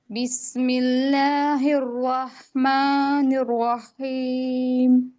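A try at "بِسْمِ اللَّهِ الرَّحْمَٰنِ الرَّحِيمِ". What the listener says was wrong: एक मिनट बेटा, आपने यहाँ पे रा पे वक्त नहीं, मजबूती से नहीं पढ़ा आपने, फिर से पढ़िए दोनों राह पे, मतलब पहले राह को। ठीक है, आप स्ट्रेस ना, बिस्मिल्लाहिर्रह, यहाँ पे हमसे निर्रहमानिर्रहीम, निर्रहीम, निर्रहीम। ओके, ताकि बिल्कुल क्लियर वाजे हो जाए।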